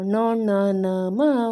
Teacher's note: ಮೂಗಿನ ಸಹಾಯದಿಂದ ಉಚ್ಚರಿಸುವ ಅಕ್ಷರಗಳು ಅನುನಾಸಿಕ.